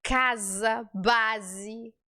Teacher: a gente pronuncia esse s com som de z